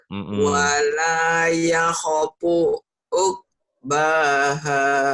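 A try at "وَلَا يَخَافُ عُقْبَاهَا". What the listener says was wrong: Banyak panjang. Wala yakhafu uqbaha.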